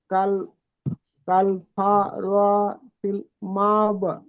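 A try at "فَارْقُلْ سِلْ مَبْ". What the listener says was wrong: মাশাআল্লাহ, ঠিক আছে।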